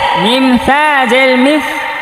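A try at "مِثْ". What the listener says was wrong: এটা থা নরম করে পড়তে হবে, জিব্বার আগা দাঁতের আগা।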